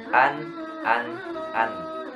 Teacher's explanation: Tidak ada qalqalah, tidak mantul, tidak ditahan juga, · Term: idhar